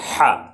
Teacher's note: یاد رکھیں جو آواز ایچ سے نکلتی ہے، ہا سے نکلتی ہے ہندی میں، تو لیکن فرق ہے، یہ تھوڑا حلق سے نکلتا ہے۔ ہا ایک ہوتا ہے، ہا ایک ہوتا ہے، ہا حلق سے، زیادہ حلق کی گہرائی سے، ہا۔